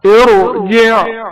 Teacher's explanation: ساکن حرف را کو تفخیم یا موٹی آواز میں پڑھا جائے گا